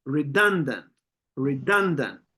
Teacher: Okay, you can feel how the stress is on the second syllable.